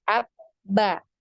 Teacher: Nah, di sini ya bisa kita rasakan ketika kita mengucapkan ba ya, ab-ba. Nah, ini bisa kita rasa ada pertemuan ya di antara bibir atas dan bibir bawah · Nah, ini bisa kita rasa ada pertemuan ya di antara bibir atas dan bibir bawah. Ya, maka bisa kita tarik kesimpulan bahwa makhraj dari huruf ba ini adalah di 2 bibir ya